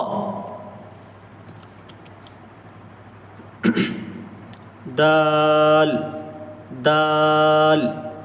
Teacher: जबान की नोक को सामने ऊपर के जो दो दांत हैं उनकी जड़ पर लगाना है। दाल बिल्कुल ता की तरह ता दाल दाल ये भी जबान की नोक और सामने ऊपर के जो दो दांत हैं उनके किनारे पर लगाना है।